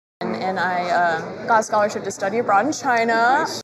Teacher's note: it's kind of flat until she gets to the end where she lifts up.